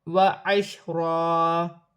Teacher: دو زبر کی تنوین وقف کی صورت میں ایک الف مدہ میں بدل جائے گی، ایک زبر گر جائے گا اور ایک زبر ایک الف مدہ میں بدل جائے گا